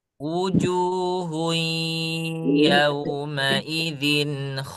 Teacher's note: Jadi harus terasa masuk ke hidung. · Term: idgham bighunah